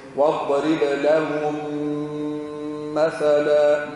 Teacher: الميم وبعدها ميم ندغم الأولى في الثانية ونعطيه الغنة وزمن الغنة حركتين واضرب لهم مثلا لهم منتهية بميم مثلا مبدوءة بميم ندغم هذه